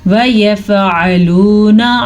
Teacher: عین کے اوپر عین جو ہے حلق سے نکلتا ہے اور یہ خاص مخرج ہے